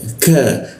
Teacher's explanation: Posisinya itu ka ada di siku tenggorokan, lidahnya kita turunkan sehingga rongga udara terbuka dan ada hembusan udaranya.